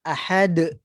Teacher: Bila sebut syiddah ni maksudnya tertahan aliran suara. Contoh kalau kita berhenti ahad, tertahan huruf dal, maka akan adanya qalqalah. Ahad, dan dia infitah, terbuka.